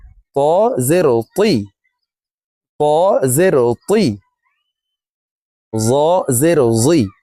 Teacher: ত হরফকে মোটাভাবে উচ্চারণ করে পড়তে হবে